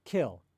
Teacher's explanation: in kill, there's a lot of aspiration. We exhale a lot.